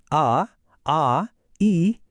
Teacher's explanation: ಶ್ವಾಸಕೋಶದಿಂದ ಬರುವ ಗಾಳಿ ಬಾಯಿಂದ ಯಾವುದೇ ಅಡತಡೆ ಇಲ್ಲದೆ ಫ್ರೀಯಾಗಿ ಹೊರಬರುತ್ತೆ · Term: ಸ್ವರಗಳು